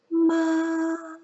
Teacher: it's a higher more nasal singing sound almost like you crushed the sound out through your nose instead of your mouth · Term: flipped tone, fifth tone